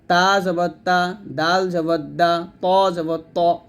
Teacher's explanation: এই তিনটা হরফ জিহ্বার আগা উপরের দাঁতের গোড়ার সঙ্গে লাগবে